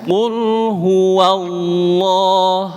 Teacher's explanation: Tapi lidah bagian belakangnya kita angkat. Ini yang membuat suara Allah menjadi tebal.